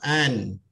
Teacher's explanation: Kalau menyentuh makhraj nun, kita matikan dengan alif an. Jadi menyentuh hujung lidah bersama dengan hujung langit-langit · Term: izhar